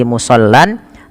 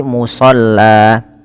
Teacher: fathatain berada di akhir bacaan itu nanti diganti panjang · bukan lagi musallan, tapi ketika waqaf atau berhenti menjadi musalla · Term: mad iwad, iwad